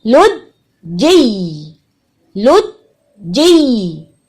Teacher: جیم سے جی کے ساتھ یا کے مخرج پہ ہٹ کرنا ہے